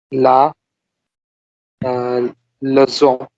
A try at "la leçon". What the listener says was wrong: Leçon, S. It's more like S.